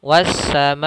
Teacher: Mad wajib yaitu huruf mad yang bertemu atau mad tabi'i bertemu dengan hamzah pada satu kata. Panjangnya adalah 4 harokat.